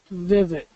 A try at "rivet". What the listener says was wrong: still hearing vivet. that V that's causing problems for you.